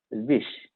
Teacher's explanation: आता विश्वास हा शब्द बघा, त्यातलं वि हे अक्षर खरं तर लघु आहे पण श्वा मधील श चा भार त्याच्यावर पडतो त्यामुळे ते गुरु झालं. विश असा उच्चार झाला आणि हा उच्चार करायला 2 मात्रांचा कालावधी लागला